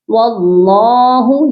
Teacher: اللہ کے لام کو موٹا پڑھا جائے گا، کیونکہ اللہ کے لام سے پہلے اگر زبر ہو تو لام کو موٹا پڑھتے ہیں۔